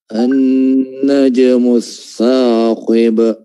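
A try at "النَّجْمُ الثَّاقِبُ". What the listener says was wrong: Saqib. Nah, di ujung dari mat atau mat tabi'i dari huruf ta, saqi, jangan ditebalkan karena bersiap-siap mengucapkan huruf qaf. Jangan ditebalkan karena alasan bersiap-siap untuk mengucapkan huruf qaf yang tebal. Namun dia tetap konsisten tarqiq saqib. Jangan saqib. Sekarang kan dia tebal akhirnya karena mau huruf qaf diucapkan juga tebal.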